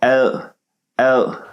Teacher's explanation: in the beginning instead of willpower is physical power l l you make like an l sound but instead of putting your tongue there you put it behind your bottom teeth oh so in other words you start from a sound that